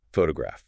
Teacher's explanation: the emphasis, the louder, higher pitch syllable falls on the first part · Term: word stress